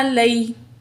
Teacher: عین زبر ع، لام زبر یا لئی، تو یہاں یا ساکن ہے، ما قبل زبر ہے، یا لین ہے، جلدی سے پڑھیں گے